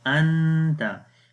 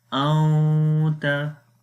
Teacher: We will hide the sound of Noon into our nose, as it is called ikhfa. Ikhfa means hide the sound of Noon.